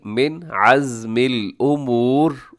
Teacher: من میں نون ساکن ہے، نون ساکن کے بعد عین تو یہاں ہو گئی اظہار حلقی، من عزم الامور، امور میں وقف کریں گے، آخر میں را پر پڑھی جائے گی۔